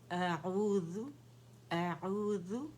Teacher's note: اعوذ، اعوذ، حمزہ فتح اس کی آواز باریک ہوگی، عین کو ہم نے اپنے مڈل تھروٹ سے نکالنے، وسط الحلق سے · حمزہ فتح اس کی آواز باریک ہوگی، عین کو ہم نے اپنے مڈل تھروٹ سے نکالنے، وسط الحلق سے، ٹھیک ہے؟